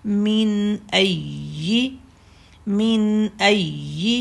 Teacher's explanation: یا کو تشدید ہے، یا زبان کے سینٹر سے نکلتی ہے تو یہاں پر تھوڑا سا پریس کریں گے